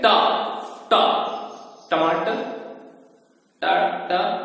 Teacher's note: अब टा वर्ग है, इनका उच्चारण स्थान है मूर्धा।